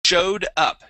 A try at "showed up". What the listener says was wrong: Yeah, so we want to have a D ending there.